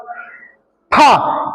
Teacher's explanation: फ भी कहां से मिलेगा? दोनों ओष्ठों को मिलाने से। · और जब हम फा बोलते हैं तो फा बोलने में दोनों होठ नहीं मिलते, तो वो शुद्ध उच्चारण नहीं है। शुद्ध उच्चारण क्या कहलाएगा? जब हम दोनों होठों को मिलाकर के फा को बोलेंगे